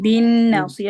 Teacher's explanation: नून पे गुन्ना पूरा करें